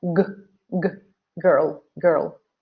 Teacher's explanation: So the G sound is a voice sound because the vocal cords here, they vibrate when you make the sound